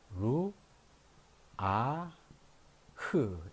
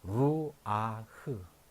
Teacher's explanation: 이것은 루하로 읽지 아니하고 루, 아, 흐 이렇게 읽게 된다 하는 것입니다. 왜냐하면 이것이 도입하다로 들어왔기 때문에 그래.